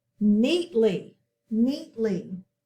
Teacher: We're going to box in the ly. We have a long E sound, can't hear the A. And we say that first syllable a little stronger.